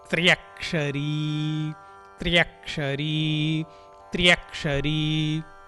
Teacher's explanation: ఇది త్రా కాదు, త్రక్షరీ కాదు, త్యా కాదు, త్యక్షరీ కాదు, రెండు కలిపి అంటే త్రా త్యా అంటే తాకి యకారము రకారము రెండు కలిసినాయి